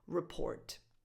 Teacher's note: it doesn't matter if you mean the noun report or the verb to report. The stress is always on the second syllable.